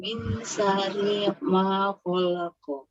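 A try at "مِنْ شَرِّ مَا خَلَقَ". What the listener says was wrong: Nah, min tidak sekedar sukun, dia agak lama.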